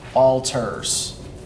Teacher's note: you put the emphasis on the second syllable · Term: I am, iamb